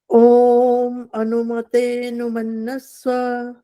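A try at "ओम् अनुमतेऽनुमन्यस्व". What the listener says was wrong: मन्यस्व, य का उच्चारण कम आया, बाकी ठीक है।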